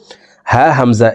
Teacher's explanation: এক নম্বর মাখরাজ হলকের শুরু থেকে উচ্চারণ করব